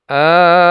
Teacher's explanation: Cara membacanya adalah dengan memanjangkan bacaan mad lazim kalimi mukhaffaf ini sepanjang 6 harakat. Setelah dibaca 6 harakat, baru kemudian masuk ke sukun.